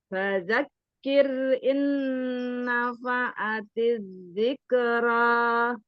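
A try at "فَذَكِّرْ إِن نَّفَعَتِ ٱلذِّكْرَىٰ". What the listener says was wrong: Di awalan tuh fadak langsung ditasdid di sukun kaf ya. Tidak fadzakir, jangan fadzakir.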